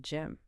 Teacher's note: Take gym, the athletic facility. It ends with the lips firmly pressed together to create the M sound.